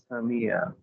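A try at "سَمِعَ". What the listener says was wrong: সামিয়া সিনের উচ্চারণটা যেন প্রপারলি আসে সামিয়া সা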